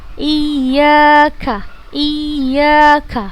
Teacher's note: ini berharokat fathah kemudian setelahnya bertemu dengan huruf alif maka kita panjang dua harakat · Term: 2 harokat